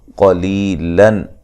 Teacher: قاف کو موٹا ادا کریں گے